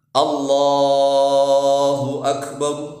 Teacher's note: Perhatikan yang panjang itu hanya di lamnya saja.